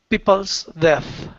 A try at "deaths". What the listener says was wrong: Deaths. Try to get the THS, deaths.